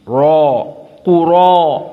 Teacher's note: Syahidnya ra dalam keadaan aqwa tafkhim.